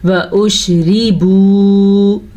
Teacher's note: را کو باریک پڑھیں گے کیونکہ را کے نیچے زیر ہے اور با پیش واو بو، یہ ہے واو مدہ.